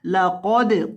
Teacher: क़ौफ़ को मोटा करना है और दाल को हिलाकर पढ़ना है। और इस लफ्ज़ के अंदर आपने खौ को और क़ौफ़ को, इन दोनों को मोटा करना है।